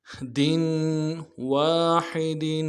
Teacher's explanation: عَلَىٰ طَعَامٍ وَاحِدٍ، واو کے ساتھ الف مدہ ہے، ایک الف دال میں کھینچیں گے، حا کو گہرائی سے ادا کریں گے اور دال کی تنوین میں غنہ کریں گے۔